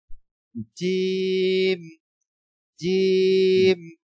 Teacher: জিম চার আলিফ পরিমাণ লম্বা হবে